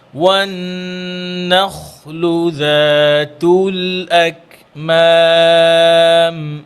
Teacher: খটা মোটা হবে, হ্যাঁ খ মোটা হরফ, আর যেন খ মোটা করতে গিয়ে নুন যেন নুন যেন মোটা না হয়।